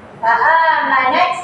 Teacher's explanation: Kalau sukun kan kita akan baca dia kita lepaskan nafas. Faaman kita akan lepas nafas kita. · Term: hammas